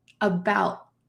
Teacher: About. Do you see that my tongue is stopped at the top of my mouth? There's no puff of air. About. That puff does not come. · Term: stopped T